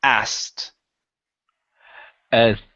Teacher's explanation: Okay, so don't worry about the K in this word. Drop the K and go straight to a T sound.